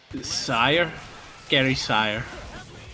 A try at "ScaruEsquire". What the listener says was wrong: You're just losing the E entirely, but. ScaruEsquire.